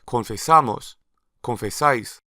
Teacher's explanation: If we travel to Spain where they use vosotros, we'll hear the stress falling in the ending